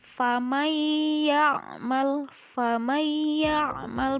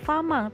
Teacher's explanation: ada nun sukun bertemu dengan iya, maka cara bacanya yaitu langsung dimasukkan ke huruf iya. Iyanya harus terdengar. Famayyamal, famayyamal, bukan faman ya, bukan famang tapi famayyamal. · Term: idgham bi gunnah